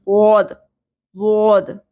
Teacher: ظا والی کلیئر آواز نہیں ہوگی, بلکہ زبان کی کروٹ اوپر والی لیفٹ والی داڑوں کے ساتھ لگے گی. تو زبان کی جب ٹپ یوز ہی نہیں ہو رہی تو ظا کی ساؤنڈ اور ضاد, ضاد, ان دونوں ساؤنڈز میں بہت زیادہ ڈیفرنس ہے.